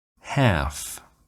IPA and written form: hæf (half)